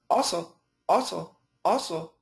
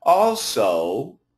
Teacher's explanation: we'll get both at o and the U together also so if we say it fast also also also it's just an o sound but when we say it slowly or when we emphasize the word you'll hear also